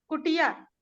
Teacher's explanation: संयुक्ताक्षर के अलावा ये जैसे कि छोटी ई या फिर छोटा ऊ या री वाले जो वर्ण होते हैं, जैसे कि कुटिया शब्द ले लें हम, कुटिया, तो इसमें कुटिया छोटी ई की मात्रा है, ट पे छोटी ई की मात्रा है, तो इसके पूर्व वाले वर्ण पे बलाघात हो रहा है, क पे बलाघात हो रहा है